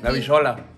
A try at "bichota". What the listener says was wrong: No, bichota con T. No, bichota.